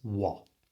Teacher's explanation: so the first thing we've got to do is make sure we don't pronounce the T on the end of what